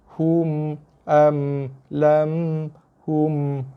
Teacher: Yang pertama jelaskan bunyi mim, yang kedua mim tu lembutkan dia. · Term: mim mati